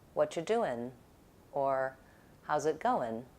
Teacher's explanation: in casual speech, Americans will sometimes use an N on verbs that have an ing ending